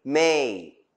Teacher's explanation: is a voiced bilabial nasal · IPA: / meI/